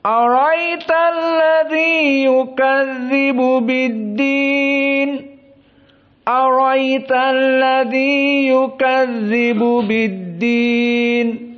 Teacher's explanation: Maka hamzahnya dihilangkan. Berarti bagaimana? Langsung masuk kepada ra. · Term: dihadfil hamzah